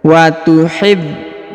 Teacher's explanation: huruf ba berharokat tasdid, maka ditahan dan ditekan ya. Setelah itu dipanjangkan 2 harokat karena di depannya terdapat waw sukun.